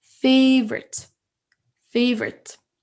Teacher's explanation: j'accentue plus sur la première syllabe.